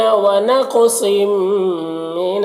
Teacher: تنوین کے بعد میم ہے، حروف یومن میں سے تو ادغام ناقص ہوگا، غنہ کے ساتھ پڑھیں گے